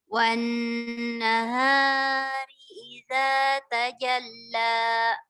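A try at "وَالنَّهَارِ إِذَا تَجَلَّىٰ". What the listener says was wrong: haknya itu 3 ketukan. Jangan terbawa dengan guna ya Bu, jadi panjang. Kalau guna kan memang bisa sampai 3 ya. Wan nahari idza tajalla.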